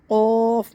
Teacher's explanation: قوف منہ بھر کے پڑھیں گے. قوف موٹا کر کے.